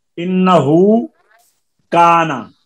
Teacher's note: انہو کانا آگے حمزہ نہیں ہے تو اس ہا الٹا پیش ہو واو مدہ کی آواز یہاں پہ ہم دیں گے